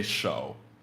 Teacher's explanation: changes to a second tone K so show is hand show it's very short and it's very deep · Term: third tone